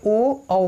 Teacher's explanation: कंठ और ओष्ठ मिला के ओ औ बोला जाता है